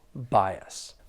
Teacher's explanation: there are two syllables the stress is on that first syllable